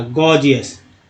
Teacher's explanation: कब ग कब ज ये समझ में नहीं आता, लेकिन एक उदाहरण दे देते हैं आपको, GORGEOUS, गॉर्जियस में पहला जी ग, दूसरा जी जो है ज के रूप में उच्चारण किया गया